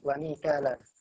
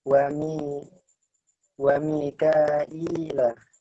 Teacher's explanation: Kalau di Imam Syu'bah menambah hamzah kasrah dan ya sukun.